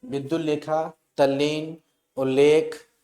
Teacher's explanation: ता के बाद ये देखिए ला आ जाए तो ता का परिवर्तन जो है, ता का परिवर्तन ला में हो जाता है